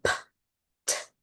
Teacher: So p, t, k. They're aspirated at the beginning of the word with that puff of air